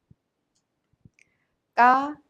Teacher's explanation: A simple sound kio soft k is combined with the vowel a ka k ca is a strong aspirated sound. Ca ga is not aspirated but has much tension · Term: tension sounds